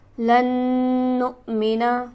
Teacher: لن کے نون پر ہم غنہ کریں گے کیونکہ نون مشدد ہے جو کہ ہمیشہ غنہ ہوتا ہے. نق پر ہم جھٹکا دیں گے، یہاں پر حمزہ ساکن ہے، حمزہ جب بھی ساکن ہوگا تو وہ جھٹکے سے پڑھا جائے گا.